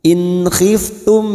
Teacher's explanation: Nun sukun dibaca jelas tanpa mendengung. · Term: idhar halqi